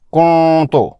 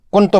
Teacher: لفظ کنتو میں نون ساکن کا اخفا ہونا چاہیے کیونکہ اس کے بعد کا حرف تا اخفا کے 15 حروف میں سے ایک ہے۔ اسے درست طور پر ایسے پڑھیں گے، کنتو، اخفا ادا ہو گیا۔